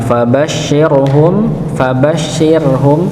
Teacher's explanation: Rnya dibaca tipis nggih. Ro sukun sebelumnya kasrah maka dibaca ti tipis ya.